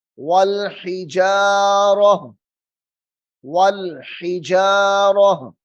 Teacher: وقف کی صورت میں تا جو ہے ہا کی صورت اختیار کر جاتی ہے، وقف کی صورت میں ٹھہرنے کی صورت میں رکنے کی صورت میں جو تا ہوتی ہے وہ ہا کی شکل اختیار کر جاتی ہے، یعنی ہا ادا ہوتی ہے۔